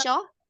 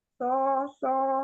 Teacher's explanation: Jangan ada tafasyi seperti huruf shin.